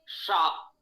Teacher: शा तालव्य है, जिह्वा तालु की ओर जा रही है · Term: तालव्य शा